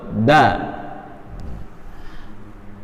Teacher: ujung lidah nempel di antara persambungan antara gigi seri dan gusi